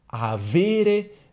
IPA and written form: aˈvere (avere)